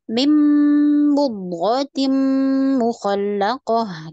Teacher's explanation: langsung menuju mimnya jadi nunnya hilang